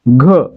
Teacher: घ मध्ये उच्चार करताना ग सोबत ह चा उच्चार होतोय म्हणून या ठिकाणी घ काय, हे देखील महाप्राण.